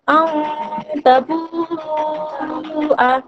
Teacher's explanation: হাজের হি, লা ইলাল্লাহি, আন তাবুআ, হামজা নুন জাবার আন, তা জাবার তা, তা। এখানে নুন সাকিনের পর ইকফার 15টি অক্ষরের মধ্যে একটি অক্ষর হচ্ছে তা এসেছে, তাই এখানে এক আলিফ পরিমাণ গুণনা সহকারে পড়তে হবে